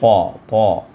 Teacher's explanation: طا کو پر کر کے ادا کرنا ہے پریشر کے ساتھ